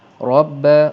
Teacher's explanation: Bila berwarna biru pekat, maka ra di sini ra yang dibaca dengan tebal atau disebut sebagai ra tafkhim